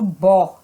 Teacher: Está no bó, é a sílaba mais forte da palavra. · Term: sílaba tônica